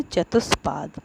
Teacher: चतुर्धन पाद ये शब्द है। अब यहाँ पर विसर्ग के बाद प आया है और विसर्ग से पहले उ है तो इसलिए यहाँ पर विसर्ग को आधा श आदेश हुआ है तो बना है शब्द चतुष्पाद।